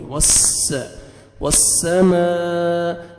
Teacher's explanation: وس، واو جب بھی آئے گا، جہاں بھی آئے گا، آپ نے لپس کو راؤنڈ میں لے کے جانا ہے، ہونٹ گول کریں گے تو واو اچھی طرح ادا ہوئے گا۔ وس، سین پڑھیں گے، صاد کا ساؤنڈ یا ثا آپ کا مکس نہیں ہونا چاہیے، سین سی ٹی کی آواز آنی چاہیے